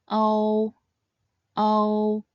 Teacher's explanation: start by sounding the o final first, and then transit into the u final. O, o. Remember, although this compound final is made up of two simple finals, it should be pronounced quickly and seamlessly as one syllable, and not as two syllables.